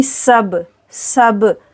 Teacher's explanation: سین میں سیٹی آئے گی · با پر کریں گے قلقلہ